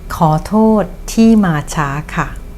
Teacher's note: ข อ is pronounced with rising tone. โ ท ษ is pronounced with falling tone.